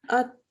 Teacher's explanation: So I'm not reading as at-tamma. I'm actually holding on to the meme for 1 second in order for the nasal sound to apply. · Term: mim mushaddad